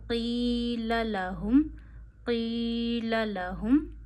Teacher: हा है यह गले के आखिर से भारी अदा होता है